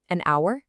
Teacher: Well, the h is totally silent. The word starts with an ow sound, a vowel sound.